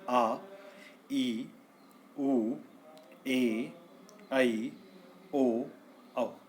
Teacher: वे स्वर जिनके उच्चारण करने में ह्रस्व स्वरों से दुगना समय लगता है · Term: दीर्घ स्वर